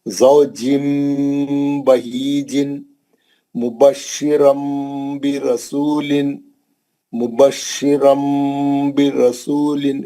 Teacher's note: ज़ौजिम बहीजिन, तनवीन के बाद बा आ गया, तनवीन में जो नून है उसकी आवाज मीम से बदलकर गुन्ने से पढ़ेंगे। तनवीन का इखलाब हर्फ बा।